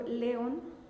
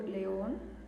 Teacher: Cuando yo digo león, yo estoy cargando la voz, cuelgo la voz en le. Pero si yo digo león, la colgatura, la fuerza de la voz está yendo en on. Entonces, identifico, más adelante que damos reglas de las palabras, voy a identificar que incluso esta palabra es una palabra aguda.